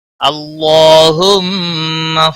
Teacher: اللہ کے لام کو موٹا پڑھیں گے کیونکہ اس کے پچھلے حرف کے اوپر زبر ہے، اس لیے اللہ کا لام موٹا پڑھا جائے گا۔